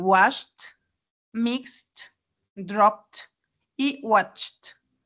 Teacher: No se pronuncia con ed, sino con t.